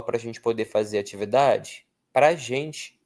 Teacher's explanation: No fluxo da fala a gente diz para prá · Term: átona